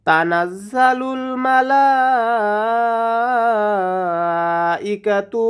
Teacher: লা এখানে 4 আলিফ টেনে পড়তে হবে